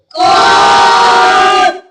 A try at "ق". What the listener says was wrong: جی کاف نہیں پڑھنا, قاف پڑھنا ہے. قاف حلق سے آواز نکالے.